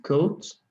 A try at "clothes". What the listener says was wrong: No, aquí me hizo falta una L, ¿verdad? No, it is not clothes.